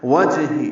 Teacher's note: جیم ساکن ہے، اس پہ قلقلہ ہوگا، واو ہونٹوں کی نا تمام گلائی سے ادا کریں. ہا کی زیر ہے، جلدی پڑھیں گے.